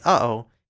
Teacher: There’s a marginal glottal stop phoneme /ʔ/ that appears in words like “uh-oh” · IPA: [ʌʔoʊ]